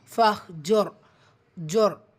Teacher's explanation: இங்கே தொம்மாவும் ஃபத்ஹா வரும்போது அந்த ரா சுக்கூன் வல்லினம்